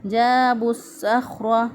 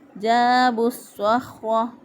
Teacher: جیم زبر الف جا، الف مدہ ہے، 1 الف کے برابر اس کو لمبا کیا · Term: مد اصلی